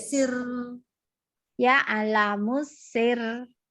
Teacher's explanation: Nah, jadi R-nya agak tahan apa? Nggak boleh terlalu getar tapi nahan, agak panjang sedikit.